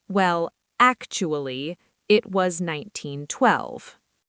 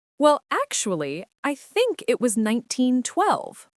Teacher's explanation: Yes, you need a friendly rising intonation.